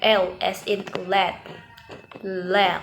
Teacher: memungkinkan aliran udara untuk mengelilingi Sisi lidah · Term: lateral approximation